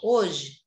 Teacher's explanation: Quando a gente vai escrever, tem quatro letras. Mas quando a gente vai falar, ó, hoje, cadê o H? A gente não fala o H. Então, são três fonemas. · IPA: /o/ /j/ /e/